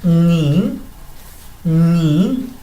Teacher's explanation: Después, consonante, una vocal y otra consonante, ni, como que subo un poco al decir ni